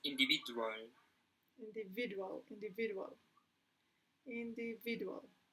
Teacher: The stress is in the third syllable.